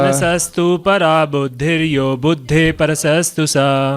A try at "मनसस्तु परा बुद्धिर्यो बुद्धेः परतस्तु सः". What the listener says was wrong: परतस्तु सः, परसस्तु नहीं, परतस्तु सः। मनसस्तु परा बुद्धिर्यो बुद्धे परतस्तु सः।